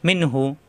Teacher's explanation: নুন সাথে মিন হাফেশ হু মিন হু এখানে নুন সাকিন আসছে নুন সাকিনের পরে হা আসছে এখানে ইজার হবে স্পষ্ট কোনো গুণ হবে না